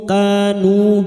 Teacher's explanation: Kanu masing-masing dua harakat kita panjangkan. Fathah diikuti alif. Duma diikuti wau sukun. Dua harakat kita panjangkan. Mad thabi'i.